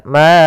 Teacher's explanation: Kemudian a'bud, ada bacaan mad jaiz munfasil, yaitu suara ma-nya dipanjangkan sepanjang 4 harokat.